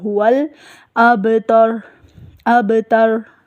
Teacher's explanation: با کے اوپر کلکلا ہوگا، لام کو بھی کلکلے سے بچایا جائے گا، هو الابتر، ابتر۔